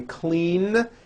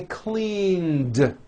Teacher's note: Clean ends with a voiced N.